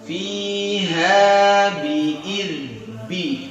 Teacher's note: Nah, ini baru ba, ya, tekan, ya, dari dua bibir tekan ba, ya, punya sifat asyiddah.